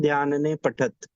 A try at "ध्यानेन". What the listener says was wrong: ठीक है, ध्यान, ध्यान ने नहीं, ध्यानेन, ध्यान से। विभक्ति